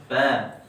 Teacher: Bibir bawah, perut bibir bawah ketemu apa? Ujung gigi seri atas. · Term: Huruf fa